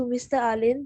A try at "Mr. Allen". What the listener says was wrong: Yes, well done. Just now you put out Alin.